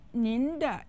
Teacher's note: uses the second and the first tones